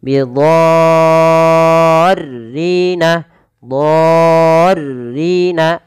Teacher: Dha di sini wajib dipanjangkan 6 harokat teman-teman, bukan lagi 4 atau 5, tapi 6 harokat. Kenapa? Karena di sini ada mad tabi'i, pada lafal dha asalnya dia mad tabi'i bertemu dengan huruf ra yang tasydid. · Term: mad lazim